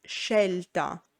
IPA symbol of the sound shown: ʃ